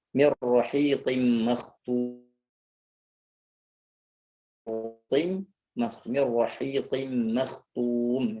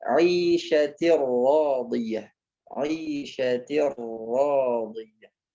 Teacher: Nah, ketika dia dihukumkan dengan idgham bila gunnah atau idgham bi ghairi gunnah, maka nun sukun masuk ke huruf ro dengan tidak didengungkan